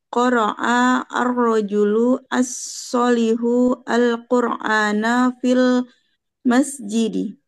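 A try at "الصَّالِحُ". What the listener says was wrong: Oke, as-solihunya agak panjang. As-solihu, oke, bukan as-solihu, enggak. As-solihu, iya sabar saya.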